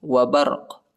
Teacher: قاف جو ہے یہ حروف قلقلہ میں سے آتا ہے، قاف کے اوپر جو ہے ہم نے جھٹکا کرنا ہے